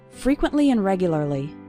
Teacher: the word and becoming n in between two more important words